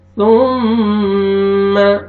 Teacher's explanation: سا کو پڑھیں گے، اپنے مخرج سے ادا کریں گے تاکہ سین میں آپ کے ساؤنڈ مکس نہیں ہونا چاہیے